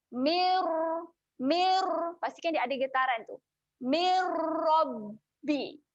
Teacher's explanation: Kuat sedikit getaran, kita tolak yang kuat sikit kat gusi atas, kemudian kalau boleh muncungkan sedikit sahaja mulut. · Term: huruf ra